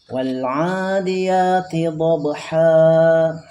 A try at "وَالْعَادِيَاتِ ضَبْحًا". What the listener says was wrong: Kepanjangan ya, jadi kurangi lagi. Dobha.